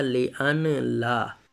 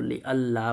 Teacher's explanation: نون اور لام کا مخرج جو ہے قریب ہونے کی وجہ سے لام کا جو ہے نون کو لام سے تبدیل کر کے لام کا لام میں ادغام کر دیا تو لِأَلَّا بن گیا، اصل میں ہے لِأَن لا، لام حرف